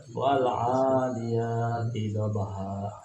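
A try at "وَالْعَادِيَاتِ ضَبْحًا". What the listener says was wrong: Lagi, hanya kasih panjang lagi 2 rakaat. Wal tidak boleh qalqalah wal, tapi wal 'adiyati dhabha.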